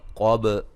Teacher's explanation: قاف کو موٹا با پہ قلقلہ